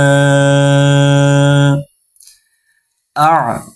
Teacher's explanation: আইন এটা একটু গলা থেকে উচ্চারণ করতে হবে, হলকের মধ্যখান থেকে উচ্চারণ করতে হবে।